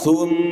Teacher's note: Ketika mim bertasdid, maka dia sempurna keluar dari rongga hidung.